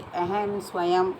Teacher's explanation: अनुस्वार एक आश्रित नासिक्य व्यंजन है जिसको लिखने के लिए चिन्ह बिंदु है। जब यह शब्द के अंत में आता है तो म के रूप में बोला जाता है